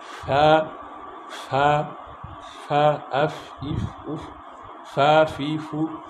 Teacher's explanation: নিচের ঠোঁটের পেট সামনে উপরে দুই দাঁতের আগার সাথে লাগায়।